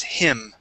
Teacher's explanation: instead of pronouncing a Spanish I sound, we're going to use a short I